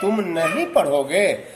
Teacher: तो यहाँ पर नहीं पर जो है वो बल पड़ रहा है, तो ये इसमें ये बलाघात है।